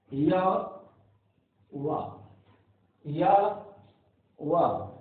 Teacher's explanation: से हैं? या वा, या वा, यह संघर्षहीन व्यंजन है, अर्थात इनके उच्चारण में वायु बिना किसी रगड़ के, बिना किसी स्पर्श के, बिना किसी अवरोध के उच्चारण में बाहर आती है